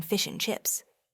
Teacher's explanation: the D in and vanishing in fish and chips